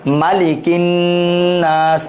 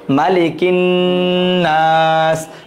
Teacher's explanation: নুনে তাসদীদ, এজন্য গুন্না হবে, এজন্য একটু সময় নিতে হবে। গুন্না মানে থেমে গুনগুন করে শব্দ করা।